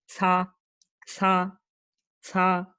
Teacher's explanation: El sonido de la C es el mismo, pero expulsando aire. Entonces va a ser más similar a una TS.